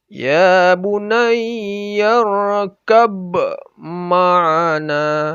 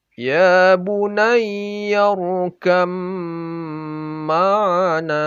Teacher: Jadi tidak dibaca ba-nya, sama sekali tidak dibaca. Apalagi qalqalahnya sama sekali hilang. Yang dibaca hanya mimnya saja. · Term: idgham mutajanisain